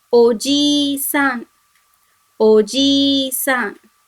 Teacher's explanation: you have to make this long E sound, otherwise it may give a different meaning. So it should be read as Oji-san.